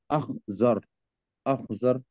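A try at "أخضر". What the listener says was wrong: हाँ, इसको द्वात पढ़े, द्वात द्वात पढ़े, अखदर, द्वात के साथ अखदर। हाँ, डी के साथ, हाँ, अखदर, अखदर।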